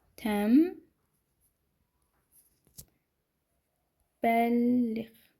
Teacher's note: Hər ikisində bunu görürük və burda niyə nnı m-ya keçirdik? Çünki n hərfindən sonra m və b hərfləri gələrsə, m və b hərfləri gələrsə, yəni biz bu n-nı tələffüzdə artıq m-ya keçirəcəyik